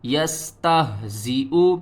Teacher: یستہزئ، یا سین زبر یس، تا ہا زبر تہ، یستہزا زیر زی، حمزہ پیش او، یستہزئ۔ یہاں پر ہم نے ہا کو حل کے سب سے نیچے والے حصے سے ادا کرنا ہے اور ہا کی آواز جو ہے وہ بھاری آئے گی